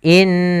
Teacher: Qala sama di sini ada bacaan nun bertasydid, di sini ada bacaan gunnah, yaitu kita membacanya dengan tahanan dulu, menahan suara gunnahnya